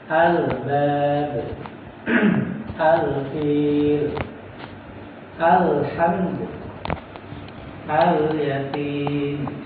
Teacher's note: Mengenai huruf lam ini, ya, dia bukan seperti L, ya, bukan seperti L di bahasa kita, bahasa Indonesia atau bahasa lokal kita. Tapi dia itu keluar dari tepi lidah bagian depan, ya, tepi lidah bagian depan menempel gigi yang kita bisa rasakan di sini, ya, 2 gigi seri, kemudian gigi gigi pertama seri, gigi samping seri, ini kemudian gigi taring, ya, dan gigi geraham pertama.